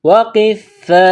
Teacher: یہ لمبی مد ہے، 4 الف کے برابر کھینچنا ہے